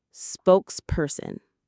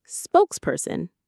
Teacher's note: The main stress is on the first word, spokes.